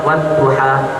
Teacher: kalau kita tambah di depannya wau maka alifnya itu tidak dibaca